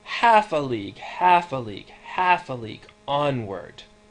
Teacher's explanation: the predominant pattern is stressed followed by two unstressed syllables